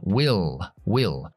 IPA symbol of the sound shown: wɪɫ